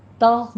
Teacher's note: تغ میں تا باریک رکھنا ہے، غین کو پر کرنا ہے